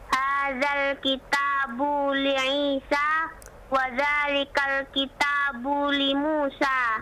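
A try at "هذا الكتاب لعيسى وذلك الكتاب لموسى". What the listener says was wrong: Masya Allah, Masya Allah. Ainnya bagus sekali tadi. Isa, Masya Allah.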